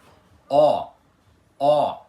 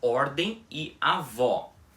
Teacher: Ó, pronunciado com a boca bem aberta e arredondada. Aquele som do ó em português que geralmente aparece em posição tônica, como por exemplo nas palavras ordem e avó. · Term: som aberto